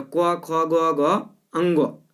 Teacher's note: क ख जैसे पढ़ते हैं तो कंठ पे जोड़ पड़ता होगा, तो क, ख, ग, घ, अंगो कंठ से उच्चारण होता है।